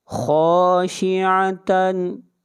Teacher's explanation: خا حروف مستعلیہ میں سے ہے، خا کو موٹا پڑھیں گے